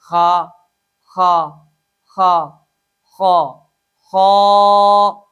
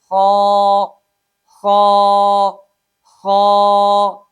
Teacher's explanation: اس حرف میں 1 الف کے برابر مد اصلی کرنی ہے